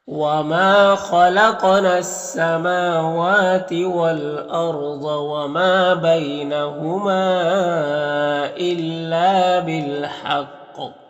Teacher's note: बिल हक़ क़ाफ़ हुरूफ मुस्तालिया में से और क़ाफ़ हुरूफ कलकला में से भी है, तो वक्फ़ करेंगे तो कलकला भी करेंगे और क़ाफ़ को पूर्व भी पढ़ेंगे इस तरह से।